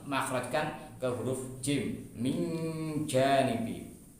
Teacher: karena bertemu huruf jim maka kemudian kita makhrajkan ke huruf jim